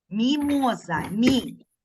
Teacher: М'який приголосний тому що в нас наступний звук і голосний